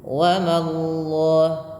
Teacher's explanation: Ma tipiskan baru allahnya tebal.